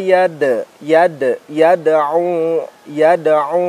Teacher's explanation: yada'u dal sukun, maka ini adalah salah satu huruf qalqalah, maka pembacaannya harus dipantulkan